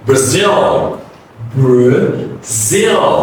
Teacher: So remember, it's br. The first A is reduced. The next one is stretch.